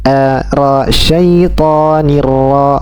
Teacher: Syaitonirra, ro, bukan ro, tapi ra, syaitonirra, bukan syaitonirrojim, ro, bukan, ya. Tidak dengan mencondongkan bibir ke depan atau membulatkan bibir, tapi dengan menaikkan pangkal lidah. Ini disebut dengan sifat isti'la.